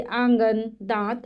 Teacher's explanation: इसका उच्चारण नाक और मुंह दोनों से होता है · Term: अनुनासिक